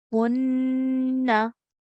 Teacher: a ghunnah sound is made for not less than 2 seconds